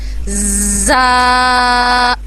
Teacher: اس میں ہماری زبان کی نوک جو ہے وہ دانتوں کے بیچ میں نہیں آئے گی, بلکہ اس میں ہمارے دانت آپس میں جڑیں گے اور ہم سختی سے ادا کریں گے. زا, سختی سے کو ادا کیا جائے گا, جیسے کہ انگلش کا الفابیٹ ہوتا ہے نا زیڈ, اسی طرح.